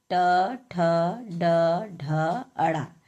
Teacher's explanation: इनका उच्चारण स्थान क्या है? मूर्धा है। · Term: ट वर्ग